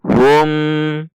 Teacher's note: mim sukun dibaca izhar syafawi, tidak dibaca dengung dan dibaca jelas